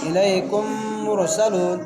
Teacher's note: کم کے میم پر ادغام مع الغنہ ہوگا کیونکہ میم ساکن کے بعد میم آیا ہے، میم کو سختی اور جماؤ سے پڑھیں گے ، میم مشدت ہے، ما میں الف مد ہے۔ الیکم مرسلون، · مر کے را کو موٹا پڑھیں گے، را ساکن سے پہلے پیش ہے